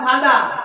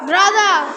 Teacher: কোন ওয়ার্ডের শেষে যদি আর থাকে তাহলে আর উচ্চারণটা হয় না